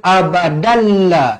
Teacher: hukumnya tanwin yang tidak selari bertemu dengan huruf lam hukumnya idgham bila gunnah, memasukkan tanpa dengung. Jadi kalau kita sambung mestilah dibaca abadalla.